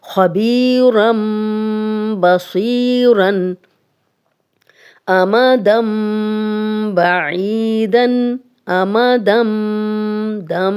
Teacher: نون ساکن کے بعد بھی اگلا حرف با ہے تو ہم غنہ کرتے ہیں اور نون ساکن کو میم میں بدل دیتے ہیں۔ اسی طرح تنوین کو بھی ہم میم میں بدل دیتے ہیں جب اگلا حرف با ہوتا ہے۔ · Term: اقلاب کا قاعدہ